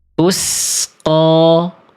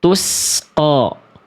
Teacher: Jadi ketika melafalkan harokat, pangkal lidahnya masih naik di atas. Sehingga bunyi vokal A-nya itu seperti vokal A yang gemuk atau sering kita dengar seperti vokal O karena pangkal lidah kita naik. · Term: bunyi tebal